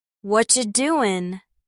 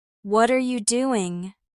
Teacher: "Whatcha doin'?" Feel how the words blend together. The T in what becomes soft, almost disappears. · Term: connected speech